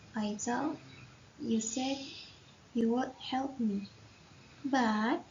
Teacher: the rising intonation in the word but indicates uncertainty or expectation of further explanations